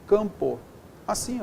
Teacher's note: esse M, ele é só uma letra diacrítica, serviu para nasalizar essa vogal anterior